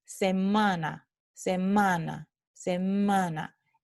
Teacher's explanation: pronunciando la A aquí, está saliendo aire no solo de la boca, sino también de la nariz. Tenemos aire que está pasando por la cavidad nasal. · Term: vocal nasal